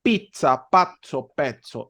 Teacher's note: se pronuncia como que si la primera Z fuera una t y la segunda fuera una s